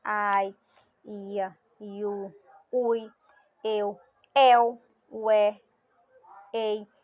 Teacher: os ditongos orais são pronunciadas apenas pela boca